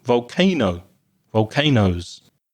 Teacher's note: Volcanoes is another word that can be spelled with an E, so OES or OS. And again, the stress is in the middle, on the middle syllable.